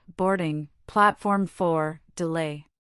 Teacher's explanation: The most important words are stressed, boarding, platform 4, delay.